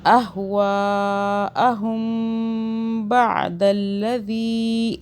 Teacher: اگر با آئے میم ساکن کے بعد تو ہم میم پر غنہ کرتے ہیں 2 سیکنڈ کا